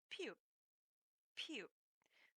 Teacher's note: consonant and it is the letter p which is called pu this is a bilabial once again it means your lips must meet in order to make this sound